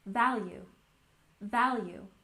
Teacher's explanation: And value, stress the first syllable, value, value.